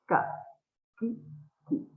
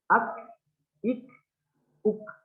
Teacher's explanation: Ketika menyebutkan huruf kaf, itu tidak tertahan tidak kaku gitu ya. Tapi ada angin yang terpercik sedikit.